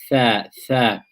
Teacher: When you pronounce tha, you will feel the front part of the tongue, you will feel it touching the inner edge of your upper incisors.